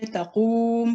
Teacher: मीम जो है मदमूम जो है वो साकिन हो जाएगा और फिर अलिफ पे फतह आएगी क्योंकि मुतहर्रिक लेटर पे फतह है। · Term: वक्फ